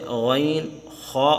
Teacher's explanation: اوپر والا حلق وہاں سے غین، خا ادا ہوتے ہیں